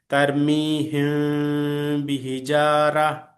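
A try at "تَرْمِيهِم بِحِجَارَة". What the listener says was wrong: Very good.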